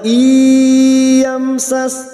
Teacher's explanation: mim sukun idhar safawi mim sukun dibaca jelas.